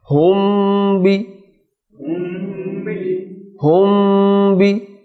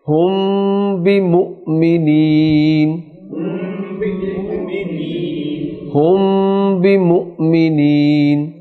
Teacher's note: میم ساکن کے بعد اگر با آ جائے گا تو وہاں بھی غنہ ہوگا، اسے اخفائے شفوی کہتے ہیں۔